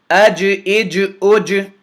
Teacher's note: That's that slight bounce, that differentiation on how I'm pronouncing the Jim, that echo on the Jim is called the Qalqalah